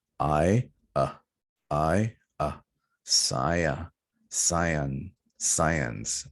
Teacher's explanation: Next one, we have a vowel combination. We have I here, I, and we are combining that with a schwa sound.